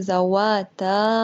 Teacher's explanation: یہ دیکھیں اس کے اندر مد ہو رہی ہے، 4 یا 5 سیکنڈ اس کو لمبا کریں گے